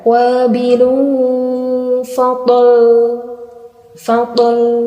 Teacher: Itu cuma disukun, kurang ditekan huruf lamnya.